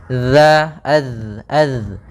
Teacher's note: dia sifatnya sifat jahar dan juga dia memiliki sifat rokhawah, mengalirnya suara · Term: huruf dzal